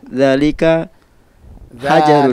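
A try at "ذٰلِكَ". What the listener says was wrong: Dzalika, panjangkan dzalnya.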